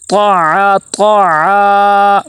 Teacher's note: طاع، طاع، عین کو لمبا کریں گے